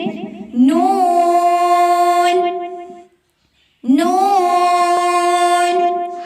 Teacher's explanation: जुबान का किनारा जब ऊपर के दांतों की जड़ से लगे तो यह हरूफ अदा होता है